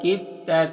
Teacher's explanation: یعنی دال کو نہیں پڑھیں گے، تا کو پڑھیں گے، کاف یا تا سے ملے گا۔ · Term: ادغام متجانسین